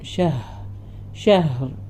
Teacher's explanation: ഹ തൊണ്ടയന്റെ അക്ഷരമാണ് ഹാന് സുക്കൂൻ വരുമ്പോൾ നന്നായി കേൾപ്പിക്കണം ഷഹ ഷഹർ പിന്നെ റ ഹെവി ആയിട്ട് തന്നെ നിർത്തുന്ന സമയം നല്ല ഹെവി